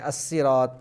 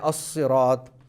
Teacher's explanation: آپ سیٹی کی آواز سے پڑھیں گے، صاد کو آپ موٹا کر کے پڑھیں گے، اور زا جو ہے اس کے اندر تھوڑا سا آپ سیٹی کی آواز بھی صفیر بھی ہوگا لیکن وہ سین سے مختلف ہوگا۔ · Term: صفت صفیریہ